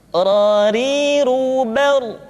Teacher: huruf ra, diucapkan dengan menyentuhkan punggung lidah dengan langit-langit